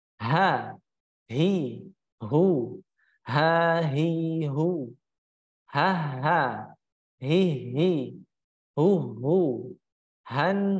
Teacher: untuk H atau yang berat, kita kenal berat itu makhrajnya terletak pada tenggorokan bagian bawah atau pangkal tenggorokan. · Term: makhraj huruf H